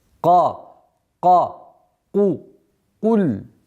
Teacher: Нужно обращать внимание, чтобы звук «каф», твердый звук «каф» не перешел мягкий звук «каф».